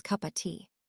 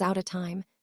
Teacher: The word of changes from uv to uh or e.